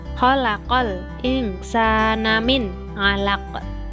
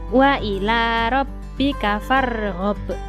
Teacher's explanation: qolqolah kubro atau besar artinya bacaan yang keras atau jelas pantulannya ciri-cirinya apabila huruf-huruf Qalqalah mati karena waqaf atau dihentikan atau berada